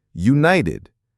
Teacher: The T in united is a flap T.